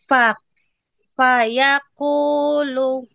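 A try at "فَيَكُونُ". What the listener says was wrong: Lu nggak panjang ya?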